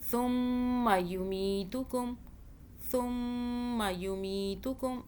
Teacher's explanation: ثم یمیتکم, ثم یمیتکم, یہ میم لال رنگ کا دیکھیں اورنج سا, یہ میم مشدد ہے, اس پہ ہم نے میم پر ہم نے کیا کرنا ہے, غنہ 2 سیکنڈ کا. ثم, فا کو سافٹ پڑھیں, زبان کو باہر کیجئے.